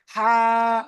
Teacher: এটা ছোট হা না, এটা বড় হা, গলার মাঝখানতে হবে হা। গাল বড় হবে দেখেন, হা।